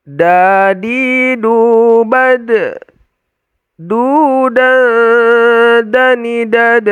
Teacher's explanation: Dal sama dengan ta apanya e makhrajnya ujung ee lidah ditempelkan ke gigi seri ee bagian atas ya bukan giginya tapi tempat tumbuhnya antara gusi dan gigi ya